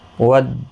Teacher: ज़ी या मद्दा है, एक अलिफ की मिकदार के बराबर खींच कर पढ़ेंगे।